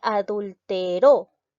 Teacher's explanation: La mayor fuerza de voz recae en la última sílaba. Es una palabra aguda.